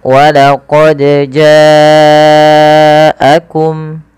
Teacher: Panjangkan huruf janya sepanjang empat harakat atau lima harakat. Karena ja di sini adalah mad wajib muttasil.